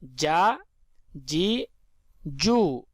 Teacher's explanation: جیم زبر جا۔ فرینڈز، جیم کو جو ہے ہم زبان کے درمیان اور تالو کے درمیان سے ادا کریں گے۔ جیم زبر جا، جیم زیر جی، جیم پیش جو، جا جی جو۔